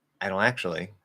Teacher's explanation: If you try to say I don't actually, even if you're saying it really fast, you flap the D, you drop the NT, and you don't make the O nasal, it will sound like you have a stuffy nose